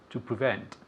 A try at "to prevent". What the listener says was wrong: Okay, very good. Repeat.